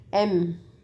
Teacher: is lower uh lip goes inside little bit inside then M our mouth is totally closed and then where air will be released from nose